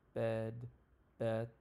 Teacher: Pronunciation, it's a front middle low vowel. So what this means is your tongue is at the front and a little low, okay? The mouth is almost closed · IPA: ɛ